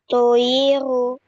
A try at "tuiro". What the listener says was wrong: Maaf, harakatnya.